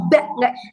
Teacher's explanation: Karena ba itu dari syafatain, bibir ya, makhrajnya keluar dari bibir. Jadi tipis aja, nggak usah ba, jangan terlalu mingkem banget.